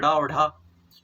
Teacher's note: जिन व्यंजनों के उच्चारण करते समय जीभ पहले ऊपर जाती है और फिर मूर्धा को स्पर्श करके अचानक झटके के साथ नीचे आती है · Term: उच्छिष्ट व्यंजन